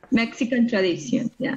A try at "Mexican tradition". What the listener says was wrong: perfect and very good pronunciation. Very good.